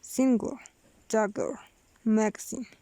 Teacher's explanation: Voiced lenis velar plosive.